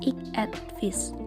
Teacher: Akibat pengaruh fonem T pada akhir kata et, fonem T tersebut yang tak bersuara menyebabkan fonem V yang berikutnya menjadi tak bersuara pula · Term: asimilasi fonemis